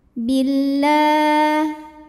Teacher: Kemudian hukum alif lamnya dinamakan dengan alif lam syamsiyah. Sebab alif lam menghadapi huruf syamsiyah yaitu lam. Maka alif lam tidak perlu dibaca. Billah La mad tabi'i muqaddar karena ada baris fathah tegak di atas huruf lam.